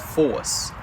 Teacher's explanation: New England traditionally is a non-rhotic region, just like England and Australia and New Zealand. And so the R in force ended up being dropped